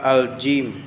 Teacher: Dari langit-langit tengah, bercampuran, bersuara tipis.